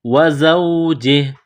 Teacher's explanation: جب وقف کریں گے تو ہا کو سائلنٹ کریں گے